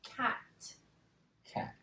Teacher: remember our tongue's moving back and it's hitting the top of our mouth.